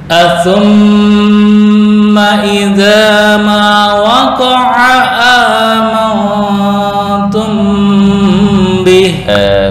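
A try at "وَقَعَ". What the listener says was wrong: Ain itu di tengah tenggorokan, enggak masuk ke hidung ya. Waqa'a waqa'a waqa'a a. Bukan a. Waqa'a waqa'a waqa'a idza ma waqa'a, bukan waqa'a. Itu berarti masuk ke hidung, itu yang kurang pas karena makhraj ain di tengah tenggorokan atau wasatul halaq.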